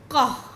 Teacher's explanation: जब हम क बोलते हैं तो कैसे आता है क और अ दोनों मिल के आता है